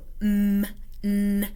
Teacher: n means that sound is created in the nasal cavity. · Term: nasals